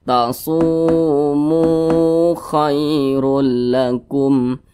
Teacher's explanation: kedua-duanya mad tabi'i, panjangnya 2 harakat atau kira-kira 2 ketukan.